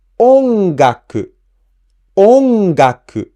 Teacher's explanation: For example, ongaku means music, and this word ongaku has the accent on the first mora o. So we pronounce O at a higher pitch.